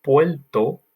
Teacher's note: It's almost like Portuguese. That first R becomes an L